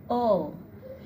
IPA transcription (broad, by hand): oʊ